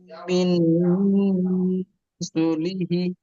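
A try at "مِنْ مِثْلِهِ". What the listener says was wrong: মিন নয়, মিম। মিম মিম জের। মিম মিসলিহি।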